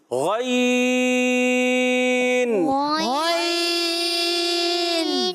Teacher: غین ادا ہوتا ہے حلق کے اوپر والے حصے سے